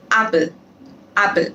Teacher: apple में ए पे ज़्यादा stress डल रहा है